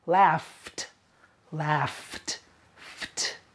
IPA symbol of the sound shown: t